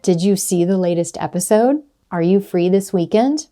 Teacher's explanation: when you ask a question that can be answered with yes or no, your pitch is going to rise at the end of that question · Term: rising intonation